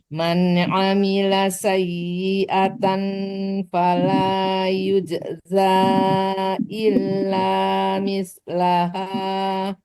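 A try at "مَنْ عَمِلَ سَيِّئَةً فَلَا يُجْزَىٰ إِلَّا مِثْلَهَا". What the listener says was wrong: kalau sayyi'atan itu disamarkan ke fa. Jangan tan ya, tapi sayyi'atan fala itu dong. Coba ulang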